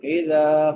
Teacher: دال نرم حروف میں سے ہے اور اس کے بعد الف مدہ ہے، ایک الف کے برابر لمبا کریں گے۔